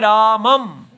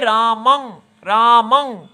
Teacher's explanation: केवल नासिका से ही इसकी वायु आनी चाहिए हमें मुंह बंद कर लेना चाहिए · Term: अनुस्वार